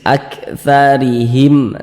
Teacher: huruf ro kemudian memiliki harakat kasrah nih baris satu ke bawah harakat kasrah maka huruf ro dibaca tipis